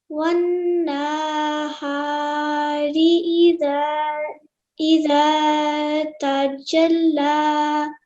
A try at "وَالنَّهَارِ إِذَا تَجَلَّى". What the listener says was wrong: Okay, just one small thing. When you said this, you said one na. Okay, that's wrong because the simple fathah. So only 1 second elongation. One na. وَالنَّهَارِ إِذَا تَجَلَّى.